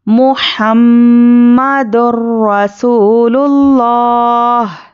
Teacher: محمدر رسول اللہ، را پر زبر ہے، اچھے سے پر پڑھیے